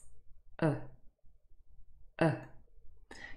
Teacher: the schwa sound this is the mid central vowel sound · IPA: /ə/